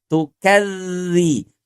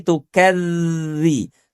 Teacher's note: bukan di belakang gigi seri bawah, tapi posisi lidahnya nempel dengan gigi seri atas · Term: huruf dzal